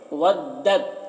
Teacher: जब साकिन और मुशद्दद हर्फ एक साथ हो तो साकिन वाले हर्फ को नहीं पढ़ते हैं, तो दाल को तो से मिलाकर पढ़ेंगे। वद्दत तो को पूर पढ़ेंगे, तो हुरूफ मुस्तालिया में से है तो पूर पढ़ेंगे।